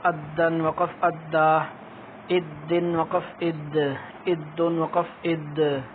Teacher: تو اس کے اندر شد کا لحاظ کرنا ہے. شد کو نرم نہیں پڑھتے تھوڑا سا جھٹکا دے کر اور دو حروف کی آواز پیدا کرتے ہیں